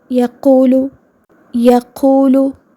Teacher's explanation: واو ساکن پر اگر آپ توجہ دیں تو یہ بھی منہ کے خالی حصے سے ہی ادا ہو رہا ہے